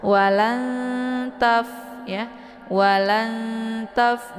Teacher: cara bacanya itu disamarkan bunyi nun-nya kemudian dileburkan suara ke dalam huruf ta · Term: Ikhfa